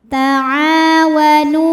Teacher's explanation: karena ada Alif didahului fathah maka panjang ainnya dua harakat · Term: Mad thobii